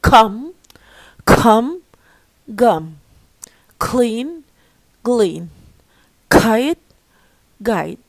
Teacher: when we pronounce k and g, the closure area is the back of the tongue. زي ما انت شايف back of the tongue بيطلع ويقفل الايه ده.